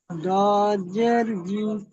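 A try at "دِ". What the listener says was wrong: জি নই দি।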